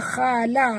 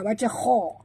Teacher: huruf kha kena baca tebal, jangan baca khala, baca kha. Khala, la jangan pula khala, jangan tebalkan la ya.